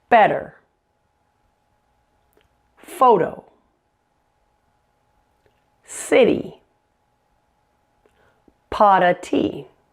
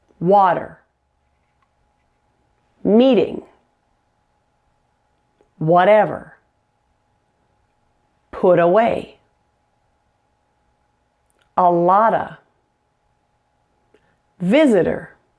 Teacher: to pronounce the flap T, your tongue quickly taps the alveolar ridge.